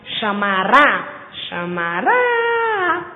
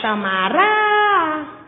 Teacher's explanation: Quando eu falo chamará, o ra já é tônico, é a sílaba mais forte da palavra.